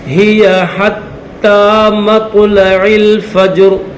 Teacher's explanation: تا کے اوپر تشدید بھی ہے اور یہ کھڑا زبر بھی ہے، ایک الف کی لمٹ میں کھینچیں گے